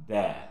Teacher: Makhrajnya ujung lidah dengan urat gigi yang di atas.